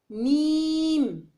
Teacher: میم بند ہونٹوں کے خشک حصے سے ادا کیا جاتا ہے